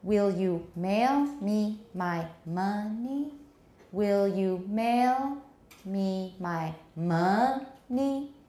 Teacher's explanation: tonic stress is on ma, and it's got a rising intonation